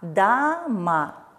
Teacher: позиции а поэтому подвергаются редукции и в транскрипции мы видим что буква о безударном положении у нас меняется на звук а